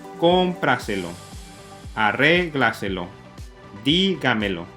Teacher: todas llevan su énfasis en la ante antepenúltima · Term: sobres brújulas